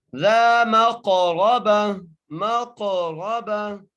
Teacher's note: کھینچ کے پڑھیں گے، ذا، میم کو قاف سے ملائیں گے، قاف پر قلقلہ کریں گے، قاف کو موٹا بھی کریں گے اور را کے پر زبر ہے، را کو پکا کر کے